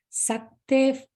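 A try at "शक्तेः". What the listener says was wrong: And the Shakte and Shuka, that is Sha, not Sa. Sha. Shakte.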